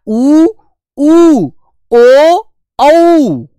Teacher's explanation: तो वृत्ताकार का मतलब समझिए, जिसमें हमारे होठ बिल्कुल गोल हो जाएंगे। ठीक है, जिसमें हमारे होठ प्यारे बच्चे बिल्कुल गोल हो जाते हैं उच्चारण करते समय